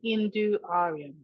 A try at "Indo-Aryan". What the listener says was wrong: Indo, not Hindu.